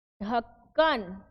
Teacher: ढ बोलने में क्या हो रहा है, हवा ज्यादा बाहर निकल रही है, कंपन हो रहा है, तो ये हमारा क्या हुआ, महाप्राण।